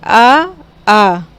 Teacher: बोल के देखिए आ, आपको खुद ही महसूस होगा कि कंठ से आवाज़ निकल रही है। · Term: कंठ स्वर